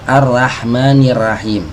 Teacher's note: seperti menipiskan ya huruf ra yang fathah dan yang dhammah